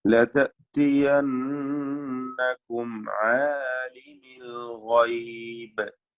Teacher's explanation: സാക്കിനായ മീമിനെ ഇൽഹാർ ഷഫവി നൽകി മടിക്കാതെ വെളിവാക്കുക